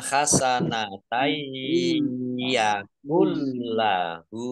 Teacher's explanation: bacaan idgham bi gunnah masuk dengan mendengung, yaitu mendengung ya, ditandai dengan ya-nya ada tasdidnya.